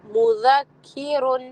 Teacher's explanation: یہاں پر کاف کی آواز دیکھیے تھوڑی سی ہوا والی آواز آ رہی ہے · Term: ہمس